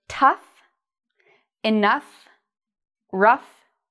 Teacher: so we pronounce this like uf so it has a short vowel at the beginning and it sounds like the word cuff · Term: f sound